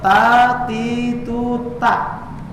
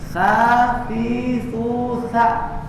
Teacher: ujung lidahnya digigit. Ta, tapi keluar angin menjadi sa.